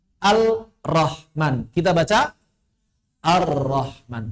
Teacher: Menghilangkan suara huruf pertama, mentasdid suara huruf kedua. Lam ketemu ro tasydid, maka lamnya hilang, rnya tasydid. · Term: idgham